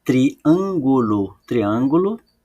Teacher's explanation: a sílaba tônica não é a última nem a penúltima é a anti penúltima · a sílaba tônica não é a última, nem a penúltima, é a antepenúltima. Então, eu escrevi antepenúltima aqui, na posição, e todas as palavras que a sílaba tônica é antepenúltima é chamada de proparoxítona.